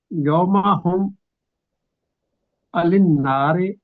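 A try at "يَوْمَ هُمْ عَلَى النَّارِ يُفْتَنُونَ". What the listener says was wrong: نہیں اس کو یوم ہم، آپ جیسے ایسے پڑھے جیسے اکٹھا ہی پڑھ دیا. یوم ہم علی النار یفتنون.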